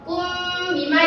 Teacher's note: Karena ada mim sukun bertemu dengan ba. Kum bima dan dibacanya dengung. Jangan lupa ya, karena ikhfa itu dengung. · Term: ikhfa syafawi